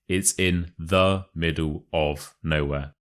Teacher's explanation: you want to put the stress on the words middle and nowhere